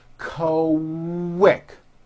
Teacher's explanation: the word quick is pronounced with a K and a strong W sound.